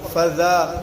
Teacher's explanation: دال نہیں پڑھنا ہے، ذا پڑھنا ہے. فذا نرمی کے ساتھ، اس کے اندر نرمی ہے. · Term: ذال